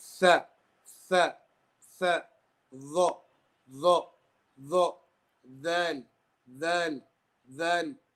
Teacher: They are pronounced with the tarf al-lisan and the edge of the thanaya al-ulya. Okay, the edge meaning the sharp, rigid area.